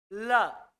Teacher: जीभ का जो छोर है ऊपर टकरा रहा है ल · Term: पार्श्विक व्यंजन